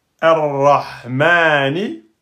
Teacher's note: C'est pas R-Ra, R-Ra, ar-Rahmani. Donc là, le lem, c'est un lem solaire, il ne porte pas de soukoun, il est suivi d'une shidda, donc c'est un lem qu'on ne prononcera jamais